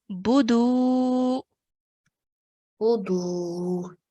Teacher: Bu, no longer than that. And then the dal is going to be pronounced for 2 counts because of the waw mud